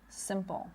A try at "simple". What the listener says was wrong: Right, your tongue is a little too low. You want to raise it a little bit, not some, but sim.